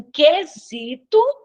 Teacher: aqui em quesito eu não escuto o u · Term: dígrafo consonantal